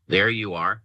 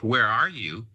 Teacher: This straddle distinction is evident in the different intonations which the child uses to distinguish between the meathetic there you are said with a falling intonation and the pragmatic where are you said with a rising intonation